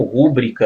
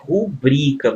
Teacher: é rubrica moçada ó tô grifando aqui a sílaba tônica né uma paroxítona e não a proparoxítona